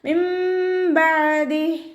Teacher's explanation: ഇവിടെ നൂനിൻ്റെ സൗണ്ടിനെ കേൾക്കേയില്ല. മീമിൻ്റെ സൗണ്ടാണ് നമ്മൾ കേൾക്കുന്നത്.